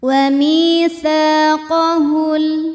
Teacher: karena ada alif didahului fathah, maka huruf sa panjang 2 harokat. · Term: matobi'i dhahiri